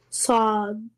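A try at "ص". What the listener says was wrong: The a sound, remember, heavy letter. Yeah, sod. Okay, in the letter sod, where are you touching your tongue? Which edge? The upper teeth? Well, that is wrong. place the tip of the tongue at the back side of the bottom front two teeth. The bottom ones.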